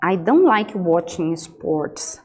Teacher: Aqui eu estou usando uma entonação decrescente no final.